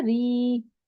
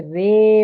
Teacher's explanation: امالہ کے مطلب ہوتے ہیں جھکانا، ٹھیک ہے؟ یعنی الف کو یا کی طرف اور اس سے پہلے زبر کو زیر کی طرف جھکانا